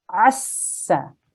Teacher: you're joining the ayn to the sin, and then you're saying the sin with the fatha on the top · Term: mushaddad sin